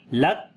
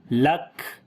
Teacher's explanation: پہلے آواز بند ہوگی لک اور پھر سانس جاری کریں گے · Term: صفت شدت اور ہمس